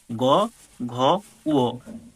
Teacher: পাঁচটা বর্গের শেষের তিনটা হচ্ছে ঘোষ ধ্বনি